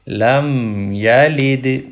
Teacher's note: لام زبر میم لم، میم کے پہ سکون ہے، لام میم میں کنیکٹ ہوگا، لام زبر میم لم، یا زبر یا، لم یا، لام زیر دال لید، لم یلد، دال کے اوپر ایکو یا کلکلا ساؤنڈ پروڈیوس کریں گے۔ جب بھی دال کے اوپر جزم ہو یا دال کو جزم کے ساتھ پڑھا جائے، سکون کے ساتھ پڑھا جائے تو دال پہ کلکلا کرتے ہیں۔